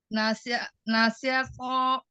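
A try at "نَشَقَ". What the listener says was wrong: Nasyaqo. To. Tidak to. Jangan dibaca huruf ya. Bedanya kalau misalnya huruf itu memang ada hamzah sukun. To itu hurufnya. Tapi ketika dia fathah hilang hamzah sukunnya. To. Beda, bukan to lagi. Kalau to masih dibaca huruf ya. To. Bedakan to dengan to.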